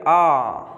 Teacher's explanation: तो मुंह खुला रहता है मतलब आ एक ऐसा स्वर है जिसमें मुंह पूरा खुला रहता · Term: विवर्त